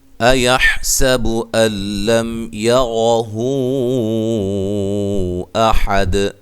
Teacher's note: لم یہاں میم ساکن کا اظہار ہے، غنہ نہیں کریں گے